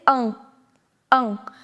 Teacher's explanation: Now, N, you are not going to pronounce. So, it is a little nasal sound. You'll say ang, ang.